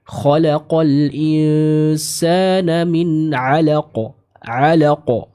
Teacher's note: Dia dihukumi sebagai qalqalah kubra dan dipantulkan dengan jelas atau kuat, ya.